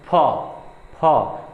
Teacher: तो इसमें क्या होता है, दोनों जो लिप्स हैं आपस में टच करती हैं, उस जब ये वाला फ बोलते हैं।